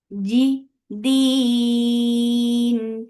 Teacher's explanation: G very shidda sound. There is no escape of sound or breath.